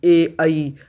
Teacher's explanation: कंठ तालव्य, जब कंठ और तालु दोनों से स्वर टकरा के निकलते हैं